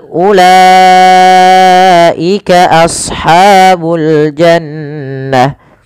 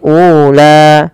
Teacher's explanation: U tidak boleh dipanjangkan, tidak boleh ula.